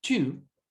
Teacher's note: es como si nosotros tuviéramos una IU, pero la T la pronunciamos como si nosotros liberáramos aire. Por eso suena como, en vez de decir tiu, suena chiu.